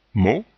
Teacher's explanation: le T n'est pas prononcé le O est le dernier son du mot ou de la syllabe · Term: O fermé